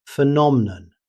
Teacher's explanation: In British English, phenomenon. However, in natural speech, the middle vowel can become very weak